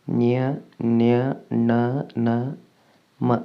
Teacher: ಮೂಗಿನ ಸಹಾಯದಿಂದ ಉಚ್ಚರಿಸಲ್ಪಡುವ ಅಕ್ಷರಗಳನ್ನು ಅನುನಾಸಿಕಗಳು ಎನ್ನುತ್ತೇವೆ.